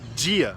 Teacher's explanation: Quem fala português no Brasil, em muitos sotaques, não todos, tem essa tendência a palatalizar essas consoantes, que é basicamente pegar e pronunciar elas com a língua um pouquinho encostada no palato, no céu da boca